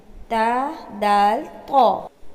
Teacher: زبان کی نوک اور اوپر کے دانتوں کی جڑ سے ادا ہوتے ہیں۔ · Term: حروف نطعیہ